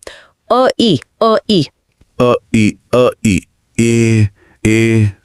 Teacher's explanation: तो ए कोई बाहरी स्वर नहीं बल्कि अ और इ के बीच का एक स्वाभाविक पुल है। · अ बोलते समय आपकी जीभ मुंह के पीछे और नीचे रहती है।